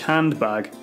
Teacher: the final type is sound deletion as an english handbag where the first of two plosives is deleted